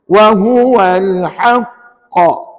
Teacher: Dia lambat sikit bunyi qa tu. Pasal apa? Kita kena breakkan bacaan sebab ada sabdu pada huruf qaf. Ini namanya qalqalah akbar.